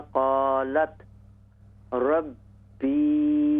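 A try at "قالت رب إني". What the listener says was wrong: बा को ज्यादा लंबा न करें, बा जेर बी। क़ालत रब्बी इन्नी देखिए यहाँ पर आप फ़र्क देखिए, रा बा ज़बर रब, बा जेर बी, ठीक है ना। रब्बी, और यहाँ पर इन्नी, नून या जेर नी, इन दोनों की आवाज़ में फ़र्क होना चाहिए। यहाँ सिर्फ जेर है, यहाँ जेर के साथ या भी है।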